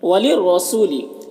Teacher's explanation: وَلِلرَّسُولِ، یہاں پر رائے مشددہ کے اوپر زبر ہے تو را کو پر پڑھیں گے